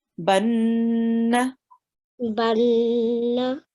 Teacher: Yes, so this noon carries a shadda, and we did make a gunna sound. We prolonged it for 2 seconds, and then we pressed on it, and then read the fatha.